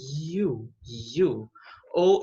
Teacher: as pregas vocais estão vibrando